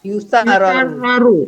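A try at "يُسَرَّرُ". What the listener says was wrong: Yusaroru nggak pakai tasdid lagi. Kalau tasdidnya dipecah maka tak boleh terdengar ada tasdid. Yusaroru.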